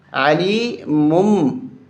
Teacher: علی مم، میم میم پیش مم، تنوین کو ختم کر کے اس تنوین کی جگہ پہ اس میم کو پڑھیں گے، میم کو میم کے ساتھ ملائیں گے